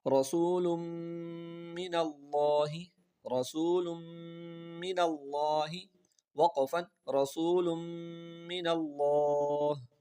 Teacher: اب سب سے پہلے یہاں را کو پر پڑھیں گے کیونکہ را کے اوپر زبر ہے، اور اس کے بعد تنوین یعنی دو پیش آ رہے ہیں اور دو پیش کو میم سے ملا رہے ہیں. یہاں پر آپ سمجھیں کہ دو قاعدوں کی وجہ سے غنہ ہوتا ہے. · میم کے اوپر شد بھی ہے، تو میم مشدد ہے تو اس پہ تو غنہ ہوتا ہی ہے ہمیشہ. اور آخر میں دیکھیں لفظ اللہ کا لام جو ہے وہ سبز رنگ کا ہے، گرین کلر کا ہے، تو اس کو موٹا پڑھیں گے.